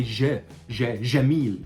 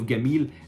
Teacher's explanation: in some areas, like let's say for example in the Delta, that's above Cairo, you will find that people that say Jamil instead of Gamil